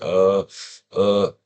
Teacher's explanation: it's not an uh or an ah, it's somewhere in between.